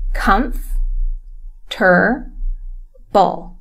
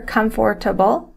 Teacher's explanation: that second Oh is not said